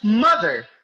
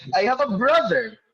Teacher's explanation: The stress falls on the first syllable.